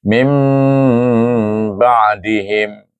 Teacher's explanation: Nun sakinah ditukar kepada huruf mim dan baru dibaca dengan ba. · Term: bacaan ikhlab